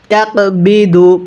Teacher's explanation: কফটা ধাক্কা দিয়ে পড়ব